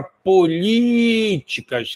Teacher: E nós temos a proparoxítona, que é quando a sílaba mais forte está na antepenúltima, como a palavra políticas, que a sílaba mais forte está no li